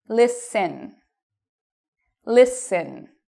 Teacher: so you cannot hear a T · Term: silent T